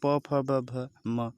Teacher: तो कहने का मतलब ओठों के स्थान से बोलने जाने वाले प, फ, ब, भ, यानी कि प, फ, ब, भ को बोलने के लिए, म को बोलने के लिए बिना आप दोनों ओठों को छुए नहीं बोल सकते।